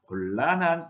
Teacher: 니은 뒤에 리을 때문에 니은은 리을로 바뀌어서 곤란한 이렇게 발음을 해야 합니다